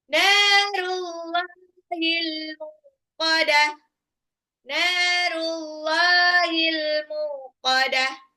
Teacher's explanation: Naru nunnya dua harakat Allahnya juga panjang ee bacanya panjang walaupun sebetulnya tulisannya ee harakat fathahnya enggak begini